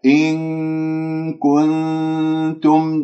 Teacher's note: نون كاف إخفاء، نون تاء إخفاء من كنتم، فيجب أن نذهب إلى مخرج أو حيز المخرج الكاف حتى أتهيأ لنطق الكاف.